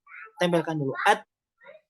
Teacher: ta ini di torful lisan bertemu dengan gigi seri bagian atas, at, maka tempelkan dulu at. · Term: huruf ta